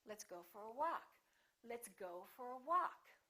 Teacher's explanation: walk is going to get the stress · Go gets some stress, but walk gets a lot more stress.